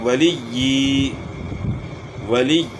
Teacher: یعنی لام کو یا کے ساتھ ملائیں گے تو شد کی وجہ سے یا میں سختی آئے گی اور کھڑی زیر کو پھر کھینچنا ہے ہم نے.